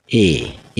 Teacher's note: এ উচ্চারণ করার সময় দেখো তোমার ঠোঁট বিশেষভাবেই কিন্তু মানে চেপটা হয়ে যাবে, বিস্তৃত হয়ে যাবে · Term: অগোলাকৃতি